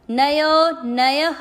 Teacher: य में अ की मात्रा, इसलिए विसर्ग को पढ़ना है ह